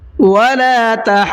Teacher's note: ضاد پہ میں رکا ہوں اور تشدید کو میں نے بہت اچھی طرح سے ادا کیا ہے